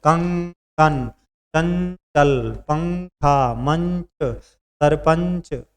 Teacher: जब भी आप उच्चारण करेंगे तो हवा नाक से बाहर आएगी।